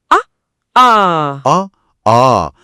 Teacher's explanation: முதல் முயற்சி வந்து வெறுமனே வாயை திறக்கல். ஆகிய இரண்டு எழுத்துக்களும் நம்ம வாயை திறக்கும் அந்த ஒற்றை முயற்சியாலே பிறந்துடுது. இதுல நாக்கோ உதடோ எந்த கூடுதல் வேலையும் செய்றதில்லை.